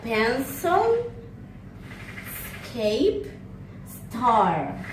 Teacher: According to voicing is voiceless. Place of articulation is alveolar. Manner of articulation is fricative.